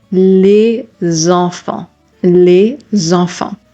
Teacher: You can hear the liaison sound here. When the final consonant is an S, the liaison sound that you are going to do is a Z sound.